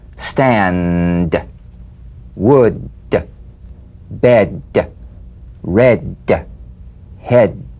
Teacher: play this D drumbeat on the springing away of the tongue from the upper gum Ridge feel a pulsation in the tongue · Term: tongue front palatal stop consonant